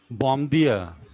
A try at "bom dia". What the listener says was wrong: So say bon dia. This M will be sound like N. Bon dia.